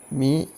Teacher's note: മി എന്നുള്ളത് രണ്ടു ചുണ്ടുകളിൽ നിന്നാണ് മി ഉണ്ടാകുന്നത്